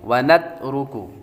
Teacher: تا باریک ہے، را پر پیش تو را کو پر پڑتی ہیں، اور کاف باریک ہے